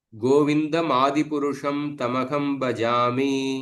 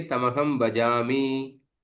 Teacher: पाद के अंत में हमेशा हम एक यति देते हैं। सो लघु अक्षर भी उसके वजह से गुरु ही हम उच्चारण करते हैं।